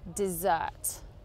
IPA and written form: dɪˈzɜːt (dessert)